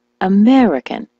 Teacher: the word American, as you know, is stressed on the me.